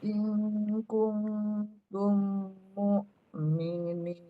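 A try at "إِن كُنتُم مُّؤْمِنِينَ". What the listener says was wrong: Dengungnya sedikit lagi. Yang kuntum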